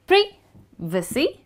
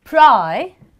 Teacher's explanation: Well, the British pronounce this word as Pri-vicy. However, the Americans stress on the I and they say Pri-vicy.